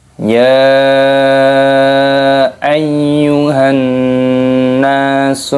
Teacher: mad jaiz munfasil, dipanjangkan boleh 4 harokat ataupun 5 harokat